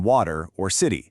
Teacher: It's not a hard T sound, and it's not quite a full D sound either. It's the super quick, light tap of your tongue against the roof of your mouth, just a little flick. That's the sound that gives American English that really fluid, connected feeling. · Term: flap T